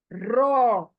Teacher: र को हमेशा पुर पढ़ना चाहिए पुर यानी full mouth full mouth Urdu में कहते हैं हम फुल पुर पढ़ना या मोटा करके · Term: मोटा लेटर